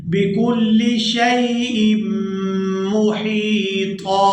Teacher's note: طا کو پورا ادا کریں گے اور ایک الف مقدار کھینچ کر ادا کریں گے